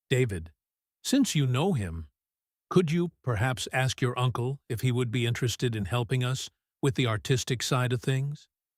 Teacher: This undulating rhythm is very common in polite requests. It is soft and rolling.